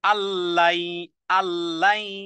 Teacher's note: নুন সাকিনে বললাম ইদগামে বেলা গুন্নাহ, গুন্নাহ ব্যতীত, মিলিয়ে পড়তে হবে।